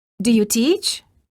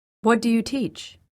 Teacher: the first question of the pair has Rising intonation and the second has falling intonation